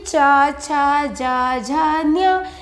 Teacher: तालू है इसका उच्चारण स्थान इसीलिए इसे तालव्य वर्ण कहा जाता है